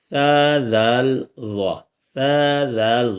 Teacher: سا ذال ضا کا مخرج ہے زبان کی نوک، جب اگلے اوپر کے اور نیچے کے 2 دانتوں کے درمیان میں جب ہم رکھیں گے تب یہ 3 حرف ادا ہوں گے، ذہن میں رہنا چاہیے۔